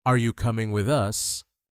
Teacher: Now naturally with a rising tone.